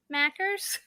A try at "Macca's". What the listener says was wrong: No. It's Macca's. There's no R.